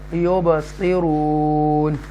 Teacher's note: حروف قلقلہ میں سے با ساکنہ ہے، حروف قلقلہ میں سے ہے، تو یہاں جنبش دے کر پڑھیں گے ایکو ساؤنڈ کے ساتھ